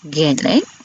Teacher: Bunyi vokal depan separuh sempit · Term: I taling